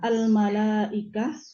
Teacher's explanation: Al-malaikah di sini ada mad wajib muttasil panjangnya 5 harokat.